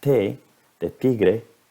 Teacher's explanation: Mientras con un consonante que se produce en la misma región de la boca, por ejemplo la T de tigre, poniendo los dedos en la garganta, no hay ningún resonante, entonces, es decir, es un consonante sin voz